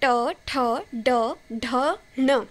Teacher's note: इनके लिए हमारी जीभ जो है वो थोड़ी सी मुड़ती है और मूर्धा को टच करती है। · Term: मूर्धन्य